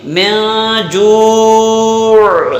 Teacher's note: جب یہاں پر اگر ٹھہرتے ہیں تو عین کا جو مخرج ہے درمیان حلق، وہاں پر آواز ختم کرنی ہے